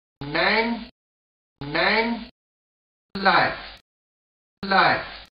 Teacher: In modern SSB, the starting points of PRICE and MOUTH are the reverse, ɑj and aw as opposed to RP aɪ and ɑʊ. · Again the end point is not very close, so a glide from a to ɪ, aɪ. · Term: PRICE diphthong